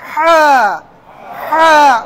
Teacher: হাটা একটু বিশেষ উচ্চারণ হবে গলার মাঝখান থেকে, গলার মাঝখান থেকে।